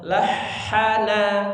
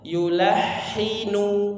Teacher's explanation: huruf ha, dialirkan terus suaranya